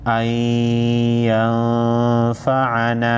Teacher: साकिन नून साकिन के बाद हुरूफ यरमलून में से या है, इदगाम मअ गुन्ना होगा।